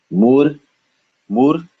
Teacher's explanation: This is the T where we touch the bottom of our teeth, the lower. When I say bottom of our teeth, I mean the lower portion of our upper front teeth.